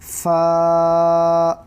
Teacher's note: سامنے کے دو دانتوں کے نیچے کے ہونٹ کو اندر کے حصے سے لگنے سے فا ادا ہوتا ہے